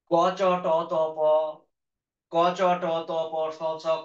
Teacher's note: এখানে কিন্তু বাতাসের চাপ কম আছে, যে জন্য এগুলো হচ্ছে অল্প প্রাণ।